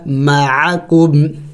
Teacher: عین حروف حلقی میں سے ہے، حلق سے ادا کرے اچھی طرح